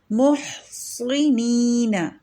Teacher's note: نون ہے کسرہ کے ساتھ، اس کو ترقیق سے پڑھیں اور صاد کو تفخیم سے پڑھیں گے